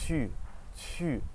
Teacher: It's the same as the English U, but your mouth is much more pursed. So think about if you ate a lemon, your mouth would be like, or if you're trying to whistle, it'd be, so try that.